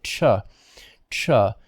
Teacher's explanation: with the stop and release of air but then the friction also